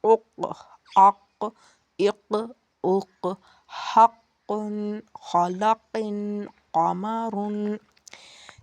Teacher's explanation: قاف، 2 نقطوں والی قاف، اور اس کا مخرج ہے زبان کی جڑ تالو کا نرم حصہ